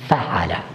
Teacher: الشفتان مثلها الفاء، الحلق مثلها العين، اللسان ما حوله مثلها اللام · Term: مخارج الحروف